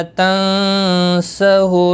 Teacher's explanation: نون ساکن کے بعد سین آیا ہے یہاں پر اخفاء حقیقی ہو غنہ کے ساتھ پڑھیں گے